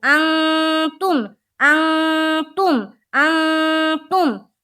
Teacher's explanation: یہاں پر اخفا کا قاعدہ ہو رہا، آگے پڑھیں گے، ناک میں تھوڑی دیر آواز کو چھپانا ہے۔